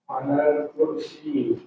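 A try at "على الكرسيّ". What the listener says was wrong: Ada tasdid iyanya. Alal kursi. Nah, pakai tasydid. Alal kursiyyi.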